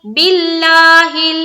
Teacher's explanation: باللہ میں لفظ اللہ کا لام باریک